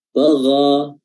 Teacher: huruf ghain makhrajnya adalah al-halq, adna al-halq, tenggorokan bagian atas